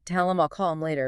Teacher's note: the H sound is often weak anyway and it just disappears